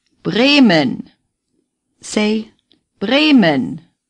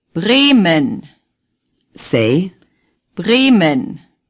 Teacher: the first E is long A. The second is short and barely pronounced, similar to the E sound in the English word omen.